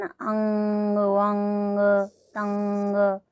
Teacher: क्या कहते हैं इसको, अनुस्वार। और इसका उच्चारण भी नाक के द्वारा होता है, नासिका के द्वारा होता है।